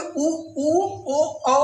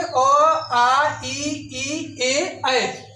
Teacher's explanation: ओष्ठ के आधार पर स्वरों का वर्गीकरण दो प्रकार का होता है। एक वृत्तमुखी स्वर होता है, एक आवृत्तमुखी स्वर होता है। वृत्तमुखी स्वर में ऊ, ओ, औ आता है। और आवृत्तमुखी स्वर में अ, आ, ई, ए, ऐ।